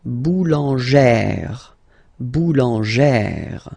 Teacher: plus this accent grave, you pronounce it like E, really open E sound